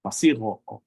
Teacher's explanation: Oftentimes that K, when it's, when it's, as a linguist and someone who has studied linguistics, this is one of those examples where intervocalic, it kind of softens to a fricative and it will become a voiced fricative actually